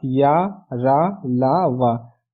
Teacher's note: इन व्यंजनों के उच्चारण में जीभ मुख के किसी भी भाग को पूरी तरह नहीं स्पर्श करती, ठीक है फ्रेंड। मीन्स जब हम इन व्यंजन को बोलते हैं तो हमारी टंग हमारे माउथ के डिफरेंट पार्ट को पूरी तरह टच नहीं करती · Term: अंतःस्थ व्यंजन